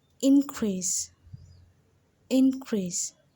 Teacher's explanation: you see how i stress more on the in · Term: word stress